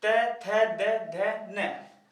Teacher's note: अब इनको जब बोलते हैं तो जीभ जो है ना दांत से जरूर टकराएगी, अर्थात दांत का बहुत योगदान होता है इनको बोलते समय, अर्थात ये व्यंजन क्या कहलाते हैं, वो कहलाते हैं दंतीय व्यंजन।